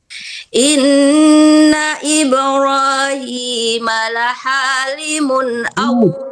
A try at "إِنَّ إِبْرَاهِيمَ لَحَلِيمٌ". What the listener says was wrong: Ya, salah memanjangkannya, bukan ha yang panjang tapi lillah halimun. Salah. Jangan ha yang dipanjangkan tapi linya la halimun.